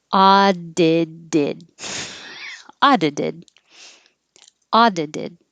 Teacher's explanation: Hold the T. If it's past tense, audited. This T will change to a D.